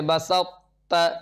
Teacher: اسی طرح سے بسط، یہاں پر جو ہے طا کا تا میں ادغام ہو رہا ہے، تو طا کی صفت قلقلہ، صفت استعلاء اور صفت اطباق باقی رہتی ہے، اس وجہ سے یہاں پر جو ادغام ہو رہا ہے بسط، اس کے اندر بھی ادغام ناقص۔